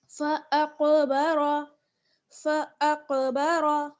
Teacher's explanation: रॉ को यहाँ पुर पढ़ना है क्योंकि पुर यानी मोटा पढ़ना है क्योंकि रॉ पर ज़बर है।